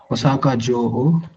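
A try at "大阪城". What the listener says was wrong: ಇದು ಓಸಕ ಎಳಿಬೇಕು, ಎರಡು ಓ ಇದೆ. ಓಸಕ ಜೋ.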